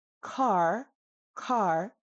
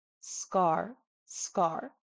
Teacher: if we say C in car, car, car. Do you see how the paper flutters? But when I say scar, we get no movement whatsoever. So this ga, ga, ga, ga is an extraordinarily soft, completely non-aspirated K sound, almost a G sound.